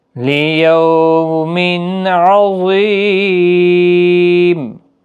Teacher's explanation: تنوین کے بعد حروف حلقی کا عین ہے، اظہار حلقی ہوگا، گنہ نہیں ہوگا۔ ظا حروف مستعلیہ ہے، پور پڑھا جائے گا، یا مدہ بھی ہے اور وقف کی صورت میں میم ساکن ہوگا، 3 سے 5 الف کی مقدار کے برابر کھینچ کر پڑھیں گے۔ · ظا حروف مستعلیہ ہے، پور پڑھا جائے گا، یا مدہ بھی ہے اور وقف کی صورت میں میم ساکن ہوگا، 3 سے 5 الف کی مقدار کے برابر کھینچ کر پڑھیں گے۔ لیوم عظیم، ظا حروف مستعلیہ ہے، خاص خیال رکھیں، پور پڑھنا ہے